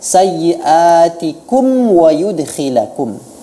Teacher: dikatupkan benar-benar kedua bibir itu saat mengucapkan mim sukun yang diikuti dengan waw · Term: izhar syafawi